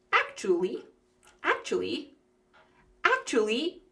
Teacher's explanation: sometimes when we're speaking quickly, that third syllable, we just leave it out